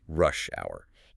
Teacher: Notice that clear stress on the first part of both words.